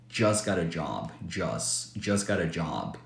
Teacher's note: it's very common to drop the T in just when the next word starts with the consonant